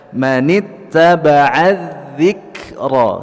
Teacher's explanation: huruf Kaf yang berharakat sukun jadi cara membacanya adalah dengan menahan suara kemudian keluar udara ya menit aba adzikro 123 VoIP ya jadi tahan suara kita